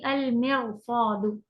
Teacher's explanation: را ساکن اور اس سے پہلے کسرہ لیکن اس کے بعد ہیوی لیٹر آ جائے تو آپ اس کو ہیوی کر کے پڑھیں گی اور کہیں گی المرصاد.